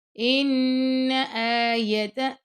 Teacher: غنہ کرنا لیکن اس کو لمبا نہیں کرنا آپ نے